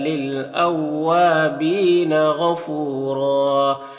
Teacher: میں سے پر پڑھیں گے، فو میں واو مدہ ہے اور دو زبر ہے تو ایک زبر کے ساتھ الف پڑھیں گے اور را کو پر پڑھیں گے